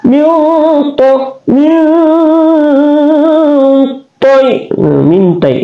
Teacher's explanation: ini to adalah taful lisan, keluar di ujung lidah kita dengan tebal